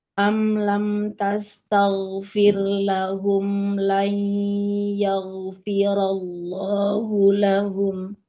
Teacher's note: yang berdekatan dengan ghain sukun harus tetap tipis dulu, ghainnya yang tebal